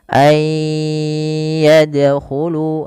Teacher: masukkan nunnya kepada huruf ya dan bunyi nunnya hilang kemudian terdengar hanya bunyi yanya saja dan ditahan sepanjang dua harakat